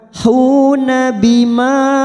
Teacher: ada mat yang bertemu dengan hamzah di lain kalimat namanya mat jaiz munfasil 4 harokat kita panjangkan